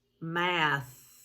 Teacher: the diagraph th and see if it's voiced or voiceless math that's just air pushing out in it not going through the vocal cords so it's voiceless